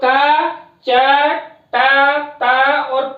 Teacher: यानी कि जो वर्ग का प्रथम अक्षर है, वर्ण है, उसको जो का, च, टा, ता और पा है, उसको हम विवार, श्वास, अघोष और अल्प प्राण के अंतर्गत उच्चारित करते हैं